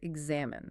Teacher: The rhythmic stress falls heavily on the second syllable, X-A-M-I-N-E, and it finishes with a very short, clipped E sound.